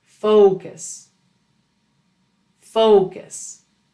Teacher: To correctly say focus, you need to use a long, tense, melodic O. This American English O includes two sounds. It starts with O and finishes with U. If you use a short, flat, single O sound without the U, you will be misheard.